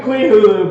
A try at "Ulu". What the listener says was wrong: It's Ulu. The H is silent. Cthulhu, Queen Ulu.